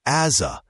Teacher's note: Here as a often sounds like as a because the s links to the a